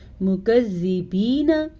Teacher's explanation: مکذبین، یہ ہے جی یا ساکن، اور یا ساکن سے پہلے زیر ہے تو اس کو یا مدہ کہتے ہیں اور اس کو کھینچ کے پڑھتے ہیں، اور یہ باریک کاف ہے